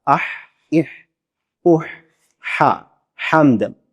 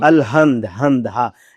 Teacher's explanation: یہ گلے کے جو ہے نا وہ آخری حصے سے ادا ہوتی ہے، اور ہا جو میٹھی ہا ہے، حمد والی ہا ہے، وہ گلے کے درمیان سے ادا ہوتی ہے